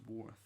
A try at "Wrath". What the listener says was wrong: No, is it just Wrath? But the W silent. Yeah, the Wrath. W silent. It's Wrath Warriors and W is silent. Wrath Warriors. And the W silent.